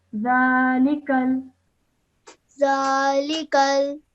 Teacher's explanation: do not elongate the lam with the kasra. It's just a simple kasra.